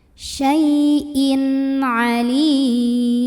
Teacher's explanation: Kemudian di sini ada idhar halqi karena ada tanwin kasrah yang bertemu dengan huruf ain, maka baca tanwinnya ini jelas idhar, bunyi an dan tidak ditahan.